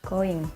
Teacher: The sound is called voiced velar nasals, for example, in the word going.